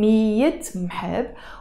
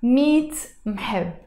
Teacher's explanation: most of the times when we are pronouncing it fast, instead of saying مِيَّة مْحَبْ, we pronounce it مِيت مْحَبْ